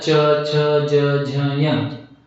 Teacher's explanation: च छ ज झ य हे जे आहेत हे तालव्य अक्षर आहेत, तालू पासून निघणारे